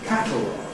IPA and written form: ˈkætl̩ɒg (catalog)